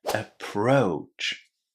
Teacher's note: Connect the O and U together and say O just as in go or no